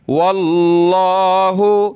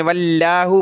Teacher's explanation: लफ्ज़ अल्लाह से पहले ज़बर हो जैसे कि वाव पर है तो मोटा करके पढ़ेंगे